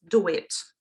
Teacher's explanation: There are two vowels, U and E, and to put them together, we need something in between, do it, yeah? So we spread our lips and W naturally occurs there. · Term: intrusion